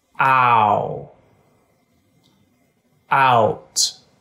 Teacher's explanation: Americans tend to start with the ah vowel and move up to the vowel to make ow